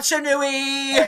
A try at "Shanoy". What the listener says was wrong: Where are you getting the ooey? Shanui. It's Shanoy.